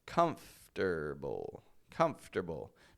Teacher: comfortable dropping the O in the middle